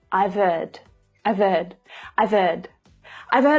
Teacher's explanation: the H of heard it often gets a little lost here it's like the sound from the end of I've links directly to the vowel in hurt